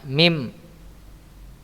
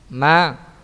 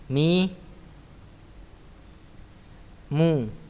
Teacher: bertemunya antara kedua bibir dalam keadaan tertutup disertai dengan gunnah yang keluar dari al-khayshum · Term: huruf mim